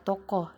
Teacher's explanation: vokal o Tengah atas belakang bundar